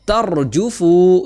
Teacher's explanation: Kemudian belakangnya itu ada ta yang berharakat fathah. Maka ron-nya itu tebal tafkhim